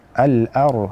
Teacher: maka jadilah si ro ini tafkhim ataupun menjadikan dia itu tebal